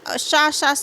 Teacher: ऊष्म व्यंजन है ना, क्योंकि इन्हें बोलने में सांस की ऊष्मा चलती है